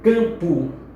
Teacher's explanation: Em campo, observe que este M, ele tão somente nasaliza o A. É como se fosse o A contínuo